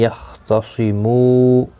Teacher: خا مستعلیہ ہے پر پڑھا جائے گا